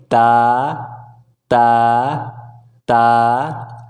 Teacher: अपने ज़बान के नोक को ऊपरी दांत के जड़ के नीचे रखेंगे और बोलेंगे ता ता ता।